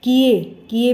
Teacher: किए में ए की साउंड भी आती है और य की भी आती है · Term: श्रुति मूलक य व